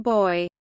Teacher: Since the consonant is also oral, with no nasal outlet, the airflow is blocked entirely, and the consonant is a stop. Its place of articulation is bilabial, which means it is articulated with both lips. Its phonation is voiced, which means the vocal cords vibrate during the articulation. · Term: voiced bilabial stop